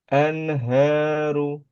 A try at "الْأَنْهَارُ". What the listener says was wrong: Masih itu ya. An, di ujungnya itu kelepas. Sebelum ke H jangan dilepas dulu. Jadi lepasnya itu langsung ke H. Anha langsung ke H. Kalau gini anha. Nah, itu kan dilepas duluan. Anha itu mantul.